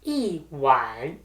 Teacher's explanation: It's the fourth tone followed by the third tone, wan.